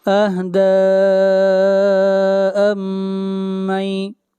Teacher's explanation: دال کے اوپر بھی مد منفصل ہے، اس مد کو بھی 3 الف کے برابر کھینچ کر پڑھیں گے